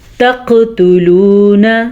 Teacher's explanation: لیکن لام پیش واو لو اسے ہم کھینچ کے پڑھیں گے کیونکہ یہ ہے واو مدہ۔ تقتلون، نہ اسے زیادہ لمبا نہیں کرنا، ٹھیک ہے۔